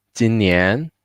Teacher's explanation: So for this year, 今年 jin is quite low, short. 年 the length longer.